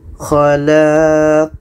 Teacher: Ada pantulan, itulah qalqalah. Khalaq. Dan pantulannya lebih besar. Lebih besar daripada sughra. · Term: qalqalah kubra